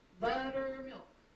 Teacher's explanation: you have the stress syllable first and then unstressed unstressed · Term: dactylic